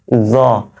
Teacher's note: আমি যখন জ বলছি তখন জিহ্বাটা সামনের দাঁতের আগাতে লাগিয়ে দিচ্ছি